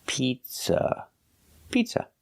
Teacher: the second vowel uhuh is a short sound like cup and up not an open Sound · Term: relax uh